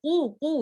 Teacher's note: قاف ہیوی ہے تو آپ اس کو قو اس طرح سے پڑھیں گے بیک آف دا ٹنگ کو اپ کر کے